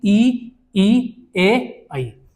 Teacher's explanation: अग्र स्वर जो होता है हमारा, जो जीवा के अगले वाले भाग से बोला जाएगा, उसमें आएगा छोटी ई, बड़ी ई, ए और ऐ।